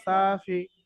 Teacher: সা টান হবে ফি টান হবে না